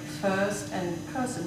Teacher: you also had some slightly British R's, like first and person